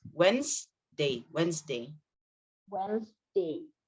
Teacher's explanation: we cut the D sound from Wednesday, so it's not Wednesday, it's Wednesday.